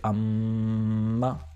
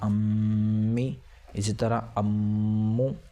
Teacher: یہاں پر میم مشدد ہے، لہٰذا یہ ایک الف کے برابر کھینچ کر اور ناک سے غنہ ہو کر پڑھا جائے گا